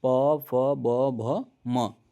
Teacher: जब आप प बोल रहे होंगे तो दोनों ओठ आपका चिपक रहा होगा · प वर्ग में आपका क्या है, तो प वर्ग में ओठ, ओष्ठ जो होता है, ओष्ठ जिसको कहेंगे, वो आपका उच्चारण होगा वहाँ से प फ, है ना, जब आप प बोल रहे होंगे तो दोनों ओठ आपका चिपक रहा हो